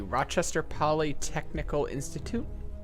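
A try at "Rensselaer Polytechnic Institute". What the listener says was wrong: I think it's just Polytechnic, not Polytechnical, but, you know, that may be splitting some hairs.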